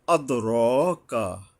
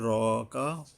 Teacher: দালের উপরে কলকলা, র এর উপরে একালিপ টানতে হবে